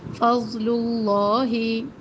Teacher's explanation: ضاد کو موٹا پڑھنا ہے، لام کو باریک پڑھنا ہے